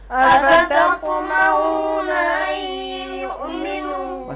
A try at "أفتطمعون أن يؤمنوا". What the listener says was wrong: بس یہاں تھوڑا سا حرف طین میں اس حرف کا ادا کرنا تھوڑا مشکل ہے، لیکن تھوڑا سا مشق کریں گے تو ہمارا یہ حرف، ہمارا یہ کلمہ، اس کی ادائیگی ٹھیک ہو جائے گی. افتط یہ غلط ہے.